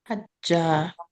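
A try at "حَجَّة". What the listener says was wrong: Hajja. Don't give it mad. Don't stretch it. No mad. Hajja. Hajja.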